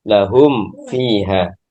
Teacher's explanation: memperjelas mim sukun atau mengidharkan mim sukun ketika bertemu dengan fa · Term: idharul mim sakinah